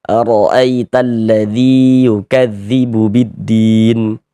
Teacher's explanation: Nah, maka huruf yang memiliki harokat kasroh dibaca panjang. Sehingga dzi dibaca panjang. Mad tabi'i panjang 2 harokat.